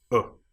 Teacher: But this is the short sound. It doesn't change. It doesn't last too long. It's just uh and so we'll remember this one as being represented by this particular symbol.